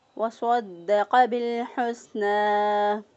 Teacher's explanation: تو بالحسنى، ہا کو وسط حلق سے ادا کیا، سین کی ادائیگی میں سیٹی جیسی آواز پیدا کی، اور نون کھڑی زبر کو 1 الف کے برابر لمبا کیا